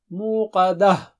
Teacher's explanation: مو مد ہے وہاں پر. قا موٹا اونچا ہے